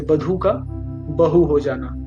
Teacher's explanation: महाप्राण व्यंजनों यानी कि अभी मैंने बताया अधिक वायु प्रवाह के साथ बोले जाने वाले, जैसे कि ख, घ, ये सारे, इनका ह में रूपांतरण हो गया